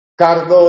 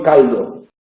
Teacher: La confusión de las líquidas en posición implosiva nos lleva a distinguir cardo y caldo.